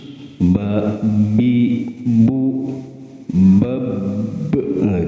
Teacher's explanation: makhrajnya tempat keluar hurufnya yaitu perpaduan antara bibir atas dan bibir bawah.